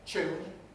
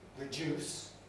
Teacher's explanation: That's actually not as common in London as the other possibility, which is yod coalescence, where T and D plus yod coalesce into ch and j, so that my tune becomes London tune, my reduce becomes reduce.